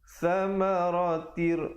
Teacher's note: Asalnya samaratin. Ta tanwin 2 di bawah bunyi tin, tapi bila datang ra idgham bila gunnah. Samaratir masuk terus tanpa dengung.